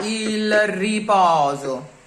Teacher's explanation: Sneak a schwa in between the L and the R.